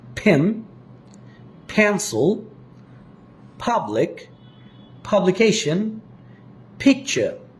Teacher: প্রথম দুটো সাউন্ড দুই ঠোঁট থেকে উচ্চারিত হয়